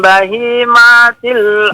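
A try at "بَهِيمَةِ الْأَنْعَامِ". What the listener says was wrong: Maknya jangan dipanjangin. Bahimatil an'am. Bahimatil an'am.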